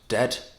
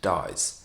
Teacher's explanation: the end of the word is not so much a harsh stop as it is an elongated one